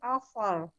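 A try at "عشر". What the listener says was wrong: Sya-nya jangan ditebalkan Bu. Iya. Asyar. Jangan dinaikkan pangkal lidah belakangnya jangan ikut naik. Asyar. Nggak boleh. Dia kan makrotnya di tengah. Dia makrotnya itu ada di tengah. Di tengah lidah. Tengah lidahnya naik ke langit atas, tapi nggak sampai nempel. Belakangnya nggak ikut naik. Asyar. Maka ada sifat tafashi nanti namanya. Asyar.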